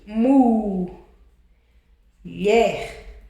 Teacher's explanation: sílaba mais forte. Essa sílaba mais forte é a última.